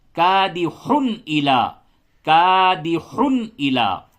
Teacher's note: یعنی نون اور تنوین کی آواز کو ظاہر کر کے پڑھیں گے تو یہاں پہ اظہار ہوگا.